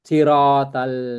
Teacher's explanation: Ada lagi pertanyaan kayak th ikhdina sir th ya sir bukan siratal bukan siratol sirat tapi kemudian depannya l yang harus senyum siratal jadi L itu enggak boleh tebal